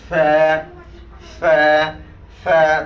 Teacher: সামনের দুইটা দাঁত নিচের ঠোঁটের পেটে লাগবে